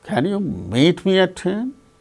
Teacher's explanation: So, the rising tone is on meet.